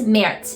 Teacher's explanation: this Z on the end makes a very similar sound to the S